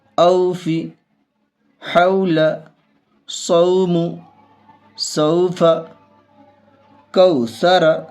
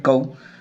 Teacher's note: کاف واو زبر کو، واو ساکن سے پہلے زبر ہے، واو لین ہوگی، واو لین کو نرم آواز کے ساتھ جلدی پڑھیں گے